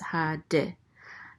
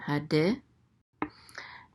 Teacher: The sheva is a quick eh sound